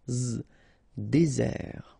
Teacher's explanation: Désert, okay, remember, final T not pronounced, désert. And really this z sound just because you get one S between the two vowels